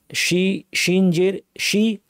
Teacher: শি জিব্বার মাঝখান থেকে নরম করে সুন্দর স্পষ্ট স্ট্রং আওয়াজ।